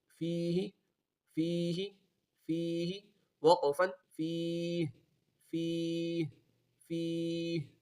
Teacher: فیہ فیہ فیہ وقفا فیہ فیہ فیہ. یا مدہ ہے، یا مدہ کے بعد ہا گیا وقف میں ہا ساکن ہو جائے گا تو اس لیے کھینچ کر وقف کریں گے اور آخر میں ہا کی آواز بھی نکالیں گے